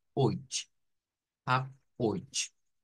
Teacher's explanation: Decimos que se pronuncia con la misma, miren, CH del ich, con esa CH que es más suave que la CH nuestra